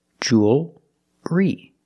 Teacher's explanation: It's still a dark L because you have the L before a consonant. The L is not between vowels.